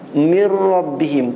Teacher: tidak ada dia dengungnya nunnya juga sudah hilang I kan Nah itulah disebut idgham Kamil Kamil artinya apa sempurna